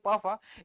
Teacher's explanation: प फ इसमें किसी तरह का वाइब्रेशन नहीं हो रहा इसलिए क्या है अघोष